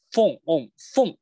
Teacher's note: 注意这个发音，这个发音上牙咬下唇啊，这是它的技巧。